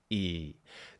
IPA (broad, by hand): iː